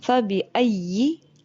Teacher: یا کا، زبان کا درمیانی حصہ اور اوپر کا تالو. زبان کا مڈ جو ہے وہ آپ کی اوپر لگنی چاہیے.